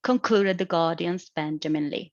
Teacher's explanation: the falling tone in the fourth ip concluded the guardians benjamin lee because it closes the sentence and